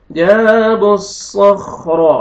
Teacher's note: सौद को मोटा करके पढ़ेंगे, खा को भी मोटा करके पढ़ेंगे। जाबुस्सखरा, रा को फतहा, रा को भी मोटा करके पढ़ेंगे।